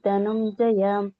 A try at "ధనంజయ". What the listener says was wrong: కాదు మాతాజీ, అక్కడ ధనంజయ. నువ్వు కాదు మాతాజీ, మీరు ధనుంజయ అంటున్నారు. ధనంజయ. ధనంజయ.